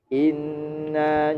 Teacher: inna bacaan gunnah. Gunnah artinya dengung.